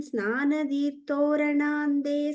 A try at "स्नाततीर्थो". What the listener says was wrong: the first line, second last word, Snatha. You're saying Snana. It's a ta sound. Snatha Tirtho.